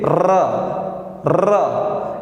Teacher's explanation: आप बोल के देखिए, र र, एक ध्वनि निकलेगी प्रकंपन टाइप की, इसमें कंपन होगा, इसीलिए हम रा को प्रकंपित व्यंजन कहते हैं।